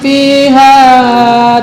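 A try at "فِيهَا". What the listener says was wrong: bukan pi tapi fi.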